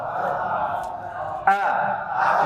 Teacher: Pita suara ketika mengucapkan huruf hamzah ini, jemaah, pita suara bergetar. Coba a. Pegang pita suara antum di sini. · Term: jahar